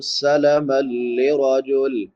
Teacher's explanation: میم پہ نون تنوین ہے، بعد میں حروف یرملون میں سے لام تو ادغام بلا غنہ ہوگا